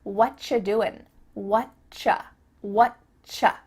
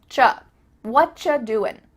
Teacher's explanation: we could reduce this to say what you're doing what cha it sounds like a ch sound here and actually we've cut out completely the word are and the word you just becomes cha whatcha doing you might